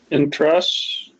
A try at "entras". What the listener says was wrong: Be careful. You're putting the stress at the end there. It's not entras. It's entras. Can you hear the difference?